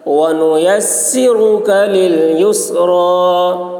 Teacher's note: را پر ہوگی، کاف کی آواز باریک ہوگی